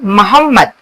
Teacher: मीम मीम दोनों होठों से निकलती है।